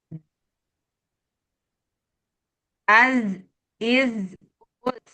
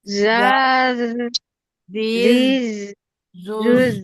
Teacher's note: Jangan sampai keluar sofirnya ya, jangan sampai ada desisnya sama sekali.